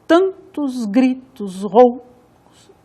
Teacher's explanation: Tan tônico, tos átono, gri tônico, tos átono, rou tônico. Então a pronúncia é tantos gritos roucos. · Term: ritmo métrico